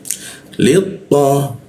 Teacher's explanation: Lit to, nah li di bawah hidung dia posisinya li, lalu masuk ke to. Nah huruf to itu lidahnya dilengkungkan di belakang gigi atas ya